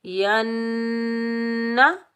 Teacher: यहाँ हम एक अलिफ की मिकदार गुन्ना करेंगे और बगैर खींचे पढ़ेंगे